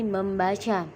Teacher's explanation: dalam proses pengimbuhan prefiks me pada dasar baca akan memunculkan bunyi sengau M